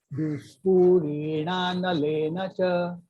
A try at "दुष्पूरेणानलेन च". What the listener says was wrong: Because this is a Dirgha and this Re is also a Dirgha. And this Le also a Dirgha. All these are Dirghas, so you must bring that in.